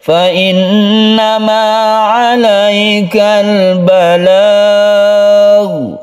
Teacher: Balagh panjangkan dulu baru sukun ghain.